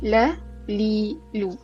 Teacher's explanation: bahagian hujung lidah, hujung lidah kita mestilah sentuh aa dengan langit atas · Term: huruf lam